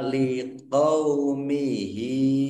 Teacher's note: domir ha kasr berdiri mad sila qosiroh dibaca panjang dua harakat